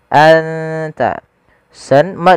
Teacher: Cara membacanya adalah suara nunnya disamarkan ke huruf ta, anta. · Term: ikhfa